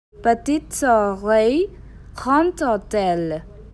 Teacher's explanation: Here s changes into z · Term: liaison